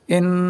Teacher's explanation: نون مشدد کی آواز ناک میں ایک الف کے برابر روک کر پڑھیں گے